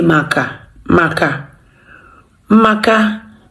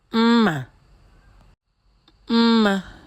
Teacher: the M there is simply standing as a consonant of its own. It's not acting as Njirimara because it's been associated, it's been followed by a vowel letter.